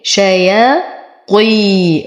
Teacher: أعطي الطاء أقل درجات التفخيم لأنها مكسورة، بعدها يا ساكنة فهو مد طبيعي حركتين.